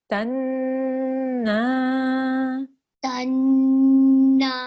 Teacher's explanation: Make sure you can feel the air coming out of your nose from your nasal pipe. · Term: light nasal sound